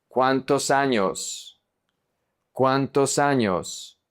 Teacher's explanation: the S is going to connect to the A.